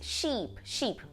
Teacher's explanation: É um I do português, igualzinho que a gente tem no português, só que a gente alonga um pouquinho mais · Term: I longo